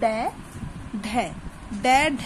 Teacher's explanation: उत्क्षिप्त में इन व्यंजनों के उच्चारण में जीभ ऊपर उठकर झटके से नीचे आती है।